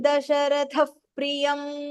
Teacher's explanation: Dasharatha, tha is Mahapranah.